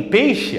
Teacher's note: vem da vogal forte para a semivogal fraca